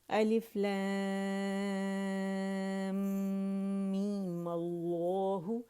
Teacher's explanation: می کو 2 کاؤنٹ کھینچا، پھر میم پہ ہم نے کیا کیا؟ فتحہ لگا کے ماللہ کر دی، ماللہ. اور ماللہ کو بھی زیادہ کھینچنا نہیں ہے، ٹھیک ہے.